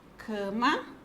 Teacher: A sílaba tônica é o cã. É a penúltima sílaba. Ela é uma paroxítona.